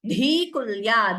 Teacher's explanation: dhikulya, dhi is mahaprana